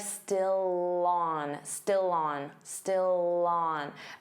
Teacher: Notice how still and on link together, and you'll hear that L sound on. So it will sound like still on, still on, still on.